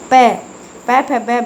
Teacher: प, फ, ब में ये प वर्ग वाले यानी कि जो ओष्ठ व्यंजन के रूप में जाने जाते हैं, यानी कि ये दोनों होठों के टच होकर निकलते हैं